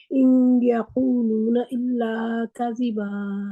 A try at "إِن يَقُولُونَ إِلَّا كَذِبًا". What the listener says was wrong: ان یقولون، ان نون کی آواز وہ ان کی نون کے مخرج کے جا کے اوپر آپ نے دباؤ نہیں ڈالنا.